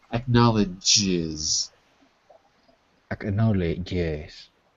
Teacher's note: imagine you have the D with a j after